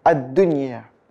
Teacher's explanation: jadi wajib dibaca jelas nggak boleh dengung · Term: izhar wajib